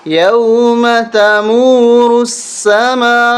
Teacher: سین کے اوپر تشدید ہونے کی وجہ سے سختی کریں گے اور میم کو کھینچیں گے، بڑی مد ہے، 3 سے 5 الف تک ہم کھینچیں گے